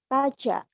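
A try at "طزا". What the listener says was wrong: Taza. Taza. Zai. Taza. Taza. Z ya. Z. Taza. Zai. Zai. Jangan jim ya. Zai. Za.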